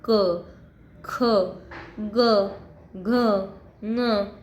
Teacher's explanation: क, ख, ग, घ, ङ ये कंठ से निकलता है।